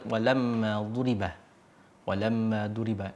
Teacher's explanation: gunah musyaddadah atau yang didenggungkan dengan secara keras